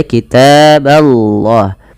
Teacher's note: ba-nya tipis, Allah-nya tebal